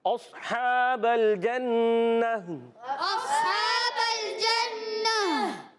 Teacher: جنہ میں جیم کا مخرج زبان کا درمیان، تالو کا درمیان